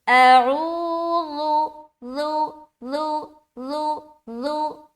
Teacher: زال کو نرمی کے ساتھ ادا کریں گے بغیر سیٹی کے